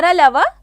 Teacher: तो अंतस्थ व्यंजन य, र, ल, व 4 होते हैं। इन्हें अंतस्थ इसलिए कहते हैं क्योंकि जो श्वास वायु होती है इनके उच्चारण के समय मुख के अंदर ही स्थिर रहती है। इनका उच्चारण करते समय वायु की रुकावट कम मात्रा में होती है, इसलिए ये अंतस्थ हैं।